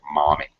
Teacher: write it like mummy uh like you have it m-u-m-m-y but americans have more of an ah sound it's more like mommy than mummy